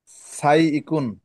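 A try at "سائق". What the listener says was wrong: সাতে একটু লম্বা করতে হবে। বলার সময় আপনাকে বলতে হবে সা ইক, সাইক। আবার শায়েক না, হ্যাঁ, শায়েক অন্য জিনিস। শিন দিয়ে বললে শাইখুন।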